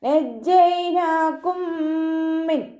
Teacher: മീം സാക്കിനയുടെ നിയമത്തിലുള്ള ഇദാം. മീം സാക്കിനയെ അടുത്ത മീമിലേക്ക് ലയിപ്പിച്ച് ഒന്നയോടുകൂടി ഒതുക്കൊടുക്കുക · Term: ഇദാം ഷഫവി